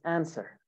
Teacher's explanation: the w is silent actually